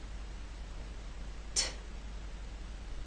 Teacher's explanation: The airflow is stopped. It cannot come out until the tip drops down and releases that air. That's why we call the true T a stop. · First, you need to stop the airflow. You stop it with the tip of your tongue and that hard bump behind your upper front teeth. Second, when you release the air, there should be a puff of air. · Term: T sound